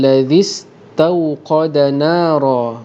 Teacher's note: Ra di sini dibaca dengan tafkhim kerana berbaris atas. Kemudian rong di sini kita dengungkan hukum ikhfa hakiki, iaitu bila mana tanwin berjumpa dengan fa, dan tanda di atas ra tanwinnya ialah baris 2 yang tidak selari.